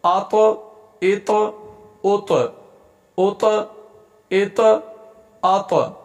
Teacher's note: طا حروف قلقلہ میں سے ہے لہذا اس کو ہلا کر حرکت دے کر پڑھیں گے اور یہ موٹے حروف میں سے بھی ہے، اس کو موٹا بھی کریں گے.